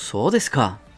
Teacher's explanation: hacia arriba, con entonación ascendente